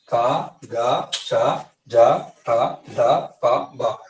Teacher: తేలికగా పలుకుతాం వీటిని, అంటే ఒత్తి పలకము. ఇలా తేలికగా పలికేటువంటి వాటిని ఏమంటామంటే ప్రాణం తక్కువ వీటికి, కాబట్టి అల్ప ప్రాణాక్షరాలు అంటాం.